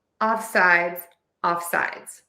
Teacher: we are going to stress off because this is a compound word